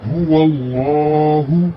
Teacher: لام کے اوپر جو کھڑا زبر ہے اس سے پہلے زبر ہے اس لیے اس لام کی ادائیگی موٹی کی جائے گی